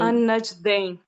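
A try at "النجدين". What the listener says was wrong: दैन नहीं पढ़ेंगे, इसको दईन पढ़ेंगे।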